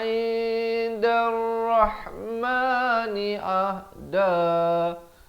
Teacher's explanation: Ain di pertengahan kerongkong, ha di pangkal kerongkong.